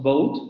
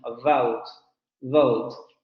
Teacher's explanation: Los labios se están pegando a los dientes superiores. El aire está saliendo de manera continua, no estamos oponiendo resistencia de manera profunda, es decir, no hacemos una oclusión completa.